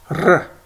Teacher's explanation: In Hebrew, you roll that r, just like in Spanish or Russian, r. But in Yiddish, not much of a roll.